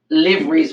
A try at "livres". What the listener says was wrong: Lear. Yeah, lear. Okay. You don't pronounce the V.